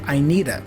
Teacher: the D for need is joined with the vowel a there is the flap sound for the D